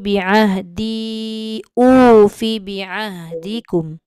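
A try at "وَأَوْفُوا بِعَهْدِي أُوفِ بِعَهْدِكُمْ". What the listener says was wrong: Wa au tu tak selesai tu. Wa aufu. Fi tak boleh panjang. Ufi bi'ah.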